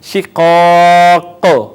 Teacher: یہاں پہ بڑا قلقلہ ہوگا، زیادہ آواز لگ کے واپس آئے گی